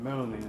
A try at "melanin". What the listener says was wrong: Sound like you saying melanie. You know, you might want to clear it That sound like melanie to me. He's saying melanin.